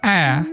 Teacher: is produced with the mouth wide open. The airflow doesn't get constricted or blocked at any point. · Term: vowel ah